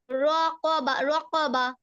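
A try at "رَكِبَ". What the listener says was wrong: এই যে কফের উচ্চারণটা ঠিক করে করো। রক, রক, জিহ্বার গোড়া তারপর আবার উপরের তালের সঙ্গে লাগবে, হ্যাঁ। রক, রক, রকাবা, রকাবা, রকাবা।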